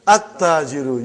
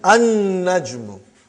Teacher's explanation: You did not pronounce lam because noon is a shamsi, sun letter.